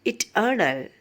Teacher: പിന്നെ അതിന് ശേഷം വരുന്ന 2 സിലബിൾസുകൾ അൺസ്ട്രെസ്ഡ് ആയിരിക്കും. Amphibrachtic meter, stress on the middle syllable